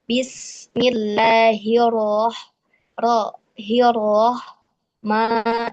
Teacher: Ketika dia berharokat fathah, tetap pada makhrajnya. Bibirnya juga tidak boleh ikut monyong gitu ya, tidak boleh ikut maju ketika mengucapkan huruf ro tebal yang dia berharokat fathah gitu ya. Saya awal-awal tuh masuk kiprah mengucapkan huruf ro masih suka terbawa bibirnya gitu ya, padahal tidak boleh.